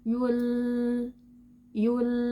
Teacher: Ketika titik artikulasi gigi taring menyentuh gusi atas, sebagian darinya akan tertutup. Namun, dengan atribut inhirafnya, ada aliran suara yang keluar dari sisi lidah kita. Yul, yul. Suara keluar dari sisi lidah. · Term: sifat inhirafnya